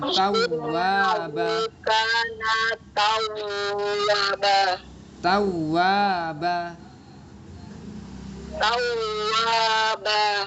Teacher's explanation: Tawwaba panjang. Wa-nya panjang.